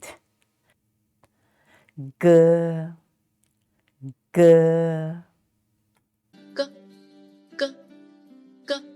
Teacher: the back of the tongue is raised against the soft pallet which is this part and just let the air out and · which is this part and just let the air out and this sound is not aspirated as in the English word good